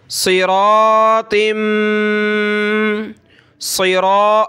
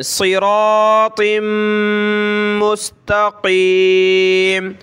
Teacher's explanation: صاد کو موٹا پڑھیں گے، را کو، اس کے ساتھ الف کو، تا کو، ان کو ہم نے موٹا کر کے بڑا کر کے پڑھنا ہے